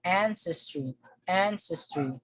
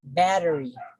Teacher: So the stress falls on the first syllable.